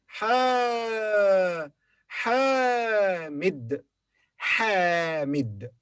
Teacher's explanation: mim has a short vowel, which is kasra